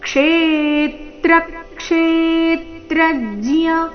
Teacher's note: ಮೊದಲನೇ ನಾಲ್ಕು ಅಕ್ಷರಗಳ ಮೇಲೆ ಆಘಾತ ಕ್ಷೇ ದೀರ್ಘ ಹೇಳಬೇಕು